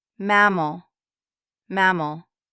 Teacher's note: First A is stressed and strong